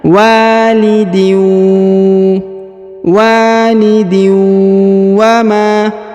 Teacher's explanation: tanwin in bertemu dengan waw bertasdid, maka kita dengungkan dan kita samarkan, ya, kita tahan dan ditekan juga.